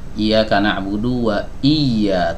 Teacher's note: Hamzah qat ya Meskipun dia berada di tengah kalimat maka dia tetap dibaca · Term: hamzah qata'